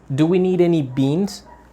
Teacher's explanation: we give a stronger intonation to the noun which is what we need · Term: sentence stress